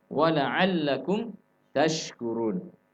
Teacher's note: makhrajnya shin tengah lidah, tengah langit-langit